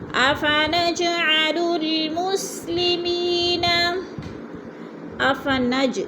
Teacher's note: جیم پہ قلقلہ ہے، تھوڑا سا ہلا کر پڑھیں گے۔